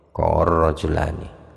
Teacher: lamnya lafaz qalah itu di mana pun adanya dia tetap diidghamkan ke huruf setelahnya